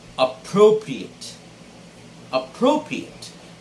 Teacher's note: the stress should be on the second syllable pro